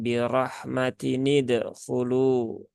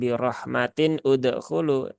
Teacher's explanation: Jadi bukan birahmatin udkhulu karena hamzah wasal itu kalau dia di tengah kata dia tidak dibaca, ya. Dia hanya dibaca ketika di awal saja.